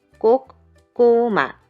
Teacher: the plain sounds are much lighter and plain and no vibration, but the double consonant sounds are very strong